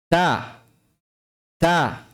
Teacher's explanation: makhraj dari huruf 'ta', yaitu bagian belakang ujung lidah di pangkal dua gigi depan atas. 'Ta' , 'da', 'ta', bukan 't'. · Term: makhraj huruf 'ta'